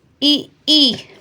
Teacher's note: यह तालव्य वर्ण होते हैं और इनका जो उच्चारण स्थान होता है वह तालु होता है